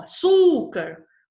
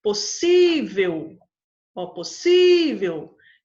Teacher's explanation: a sílaba mais a ser pronunciada com mais força é a penúltima, é a paroxítona.